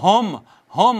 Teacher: حمزہ ہا اقصی حلق سے ادا ہوتی ہے۔